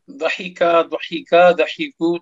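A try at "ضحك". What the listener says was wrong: ठीक है माशाल्लाह।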